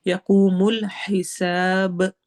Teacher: آخر میں با میں ہماری آواز ہلے گی، ایکو ساؤنڈ ہوگی، اور اس کو ہم کلکلا کہتے ہیں۔